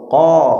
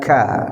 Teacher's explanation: qaf ini dia ketika dibaca itu tidak mengeluarkan hawa. Qo beda dengan ka. Ka itu ada hawa yang keluar ya. Terus qof ini termasuk huruf yang yang tebal.